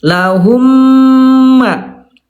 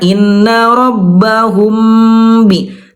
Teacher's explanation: Mim mati bertemu dengan ba ikhfa syafawi itu bibirnya tidak betul-betul dirapatkan, ditekan. Tidak betul-betul ditekan seperti halnya mim bertemu dengan mim.